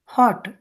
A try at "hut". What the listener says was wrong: హాట్ అంటే హెచ్ఓటి పెద్దమ్మా. హెచ్యూటి హట్ అమ్మా, గుడిసే. హెచ్యూటి అంటారు దాన్ని. ఇక్కడ ఆ అంతే, హ హ చిన్న హ అంతే.